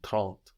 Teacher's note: We see trente is spelled with an E, but we hear something more like an A in trente.